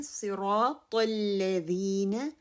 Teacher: صاد تفخیم ہے، را تفخیم ہے، طا تفخیم ہے